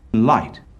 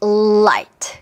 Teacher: 혀가 꼭 눌러지고 나서 터지는 소리이기 때문에 한국어 우리 귀에는 을이라는 소리가 들립니다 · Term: L 사운드